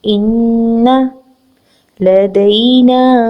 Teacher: نون مشدد پر غنہ کریں گے